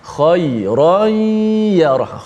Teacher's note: Khairan boleh dengung, sama juga idgham ma'al gunnah, tanwin masuk ke dalam ya.